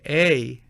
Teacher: when you say A, you will have a gliding sound that represents several positions of the mouth, not one